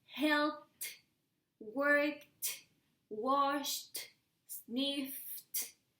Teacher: All these final sounds don't vibrate.